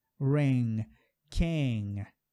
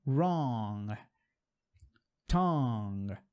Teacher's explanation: E esse som aqui do N você está fazendo corretamente de acordo com o inglês. Só que em inglês, esse G é muito suave, ele quase não sai.